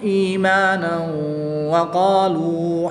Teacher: اگر یہاں پر ہم وقف نہیں کریں گے تو 2 زبر کی تنوین کو واو کے ساتھ ملائیں گے، اور یہاں پر تنوین کے بعد وصل کی حالت میں واو حروف معلوم میں سے آ جائے گا، تو یہاں پر وصل کی حالت میں ادغام مع غنہ ہوگا، یعنی غنہ کر کے پڑھیں گے، اور وقف کی صورت میں الف مدہ سے تبدیل کر دیں گے 2 زبر کی تنوین کو۔